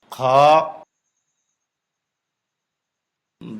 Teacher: খ এ হরফ মোটা উচ্চারিত হবে, বাংলা ক্ষয়ের সাথে আকার প্রকাশ পাবে না। যে হরফগুলি মোটা হয় সেগুলি বাংলা আকার প্রকাশ পায় না।